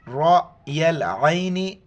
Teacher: را کو حمزہ کے ساتھ ملاتے وقت جھٹکا دینا ہے، را کو موٹا پڑھنا ہے